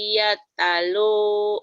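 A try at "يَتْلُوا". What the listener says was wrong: bukan yatalu. Woi, jangan yatalu. Yatlu. Pantainya mati. Yatlu.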